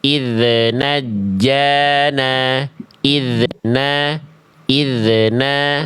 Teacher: Kita lihat kesalahan yang seringki terjadi ketika kita melafazkan d sukun memantulkan suara dari huruf dalal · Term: qalqalah